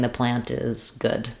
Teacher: You mostly will hear the T if I'm saying the plant is good. Then you'll hear a light little T.